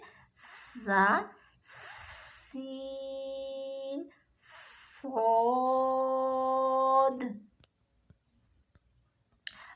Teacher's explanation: کوشش کرنی ہے کہ زبان کی جو نوک ہے نیچے والے دانتوں کے کناروں کے ساتھ آپ کی ٹچ ہو، نیچے والے دو جو سامنے والے دانت ہیں ان کے ساتھ ٹچ ہونی چاہیے، اور سیٹی کی آواز کے ساتھ، یہ تینوں حروف جو ہے سیٹی کی آواز کے ساتھ آپ ادا کریں گے